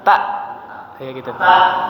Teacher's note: Jangan tak, jangan ada anginnya. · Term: Hamzah